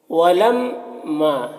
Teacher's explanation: ولما میم مشدد ہے تو غنہ ہوگا، اور یہاں پر الف سے پہلے زبر ہے تو الف مدہ ہوا، اسے ایک الف کے برابر کھینچیں گے۔